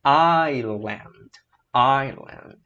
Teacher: O S é mudo e o I tem som de I, né? Vogal longa.